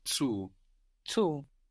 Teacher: Zu in German, Z-U. Zu. And the U is long